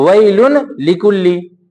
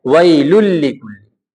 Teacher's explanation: اب تنوین کی آواز نہیں نکلے گی بلکہ اب لام کی آواز نکلے گی. اس کو ہم آگے سے ملا دیں گے.